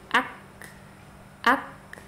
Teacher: sifat syiddahnya dulu dimunculkan, baru kemudian sifat hamesnya dari huruf kaf. Jadi ak ya, berhenti dulu suaranya, baru kemudian turun sifat hamesnya.